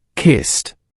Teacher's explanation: Can you feel how the sound is sharp and clean? There's no vibration. It's like a little stop of air.